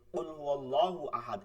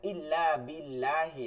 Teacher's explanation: কুয়াল্লাহু আহাদ এটা পুর হইছে মোটা হইছে আর ইল্লা বিল্লাহি এই বিল্লাহি এটা চিকন হইছে